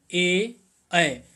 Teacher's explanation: तो कंठ तालव्य में ए, ऐ, इनका जब हम उच्चारण करेंगे तो कंठ और तालु इसमें क्रियाशील रहेगी इन स्वरों का उच्चारण करने में।